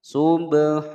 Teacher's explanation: Hukum bacaan ikhfa disamarkan dan didengungkan selama dua ketukan. Sub, ada ba sukun dipantulkan ya. Qalqalah sughra karena dia berada di tengah-tengah kalimat.